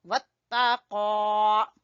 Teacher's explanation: قاف زبان کی جڑ سے اور کھڑی زبر برابر الف مدہ۔